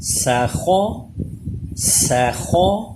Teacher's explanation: سین باریک، خا پر